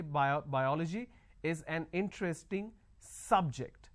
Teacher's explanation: I'm stressing on the first syllable